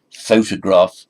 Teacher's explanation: photograph stress on the first syllable